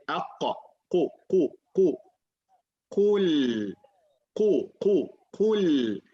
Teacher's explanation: qaf comes from the back of the tongue